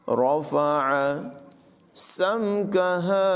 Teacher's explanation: سین میں سٹی کی آواز پیدا کریں گے، ہا کو حلق کے نچلے حصے سے ادا کریں گے۔ رَفَعَ سَمْكَهَا فَسَوَّاهَا، سین کو واو سے ملانا ہے اور واو